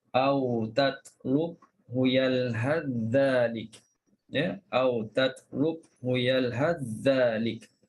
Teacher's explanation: Beza dengan yang Hisham tadi. Hisham baca dengan izhar, tapi Ibnu Zakwan dia baca dengan idgham.